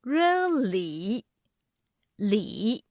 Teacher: The third tone expresses strong doubts with a deep and low pitch.